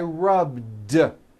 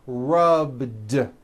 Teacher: All I did was add a voiced D sound at the end. Rubbed. It's not rubbed with an unvoiced T.